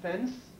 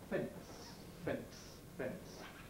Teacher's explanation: this is a habit that many people have of inserting a plosive between a nasal and the voiceless most obviously in ns sequences